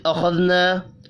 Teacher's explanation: خا حروف مستعلیہ ہے، پر پڑھیں گے. الف مدہ کو ایک الف کے برابر کھینچ کر پڑھنا ہے.